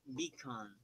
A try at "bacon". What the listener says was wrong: Beacon? Bacon. You're pronouncing it way too Spanish, way too strong. It's softer. Beacon, bacon, beacon, bacon.